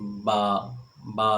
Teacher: اس طرح 16واں مخرج با، میم اور واو کا ہے، ان کو غیر مدہ بھی کہتے ہیں۔ با جو ہے یہ دونوں ہونٹوں کے اندرونی تری کے ملنے سے ادا ہوتی ہے